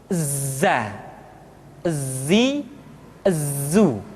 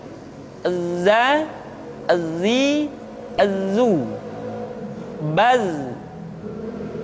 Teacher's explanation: Tetapi ingat, huruf Z bersifat al-jahr. Artinya, ketika kita mengucapkan huruf Z, suara kita mengalir, akan tetapi nafas tidak boleh mengalir. Contoh yang salah seperti ini, za, zi, zu.